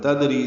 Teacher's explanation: دال ساکن پہ قلقلہ ہے، را باریک ہے، ری مدہ ہے تو حرکات لمبا ہے۔